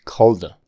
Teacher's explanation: Esa D en called se vuelve una flap.